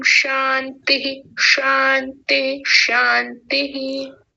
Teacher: शांति में तालव्य शकार कुछ मूर्धन्य शकार की ओर झुका हुआ सा लग रहा था, तो उतना तालव्य उतना उतना मूर्धन्य ना बनाए, इसको तालव्य ही रहने दें।